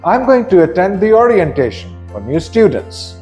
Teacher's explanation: The falling intonation is after the word orientation and also after the word students right at the end of the sentence.